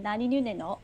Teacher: the Japanese N sound, as in nani nu ne no, is actually not pronounced the same way as the English N. It's actually slightly closer to your teeth, but it's not as close to your teeth as the Korean na.